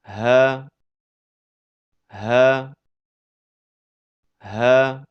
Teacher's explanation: Huruf ha keluar dari pangkal tenggorokan.